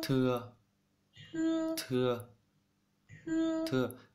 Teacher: Thằng T thì đọc giống như là giữa T với thờ, chứ không hẳn là thờ đâu